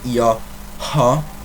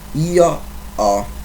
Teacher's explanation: the h is not pronounced